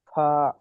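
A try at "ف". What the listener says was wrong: ফা, একালি টান দিয়ে বলেন, ফা।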